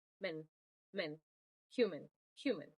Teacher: we have the example human uh m is a viaval sound while I use both my lips I also start to lift my tongue for the n and it would sound like men men men if I try